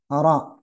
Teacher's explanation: Jadi bergetar iya, tapi getarannya sekali itu udah selesai.